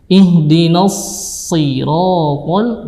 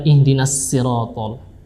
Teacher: Huruf shad ini adalah huruf tebal ya, dia isti'la dan itbaq. Sedangkan huruf sa ini adalah huruf tipis ya, dia menurunkan lidah.